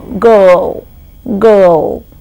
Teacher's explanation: Usually you have this combination of a vowel in spelling with the letter R in spelling, which brings up this particular sound to be articulated. If you look at girl in spelling, Girl, I and R together, there is no R in pronunciation. It's just the girl, girl.